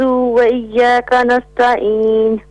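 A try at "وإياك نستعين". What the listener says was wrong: نستعین تا کی جگہ تو نہیں پڑھنا, تا کو تا ہی پڑھنا ہے.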